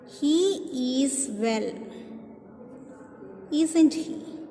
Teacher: I'm sure he is well. So it is falling tone.